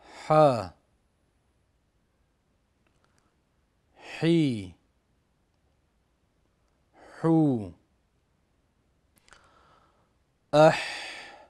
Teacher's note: Ha tovushi halqum o'rtasidan talaffuz etiladi.